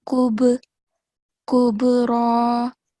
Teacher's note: On ba, we have to do qalqala. So jerking sound. · And ra is going to be thick because it has fatha